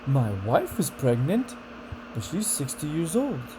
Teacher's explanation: Starts up, it comes down, and goes up again. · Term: disbelief